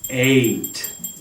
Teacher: So, like the English sound A in ate, A-T-E, I ate the cake. That A sound is two sounds put together.